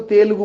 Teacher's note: अपन यहाँ के लोग बोलेंगे तो तेलुगु बोलेंगे, ए को दीर्घ करेंगे, द्विमात्रिक करेंगे।